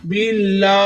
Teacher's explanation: لام کے اوپر کھڑی زبر ہے، ایک الف کی مقدار کھینچ کر بھی پڑھیں گے۔ بیلا موٹا نہیں پڑھنا، اس کو باریک پڑھنا ہے۔ آپ ادھر موٹا کریں گے تو لفظ کے میننگ چینج ہو جائیں گے، اگر ہم قرآن پاک کو تجوید کے ساتھ نہ پڑھیں تو لفظوں کے معنی ہی چینج ہو جاتے ہیں۔